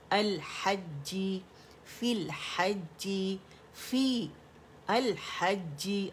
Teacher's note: लाम पढ़ा जाने वाला है क्योंकि लाम कमरी है, उसका इजहार हो रहा है लाम का।